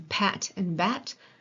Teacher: we call it bilabial because we're putting our two lips together.